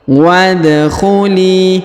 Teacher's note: Ini hamzah wasol. Wadkhuli, huruf da berharokat sukun, maka kita pantulkan.